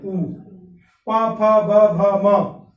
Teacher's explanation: ऊ का उच्चारण करिए, ओष्ठ से ही होता है, जीभ को कहीं लड़ने की जरूरत नहीं है।